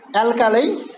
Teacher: last one is a diphthong, I. So of course it is then stronger than the first one